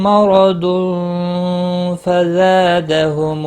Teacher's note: تنوین کے بعد حروف اخفا کا فا آیا، اخفا حقیقی ہوگا